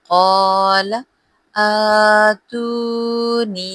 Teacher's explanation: یا مدہ اور اوپر چھوٹی مد ہے تو ہم نے اس کی مقدار 3 سے 4 حرکات اور کھینچ کے پڑھنی ہے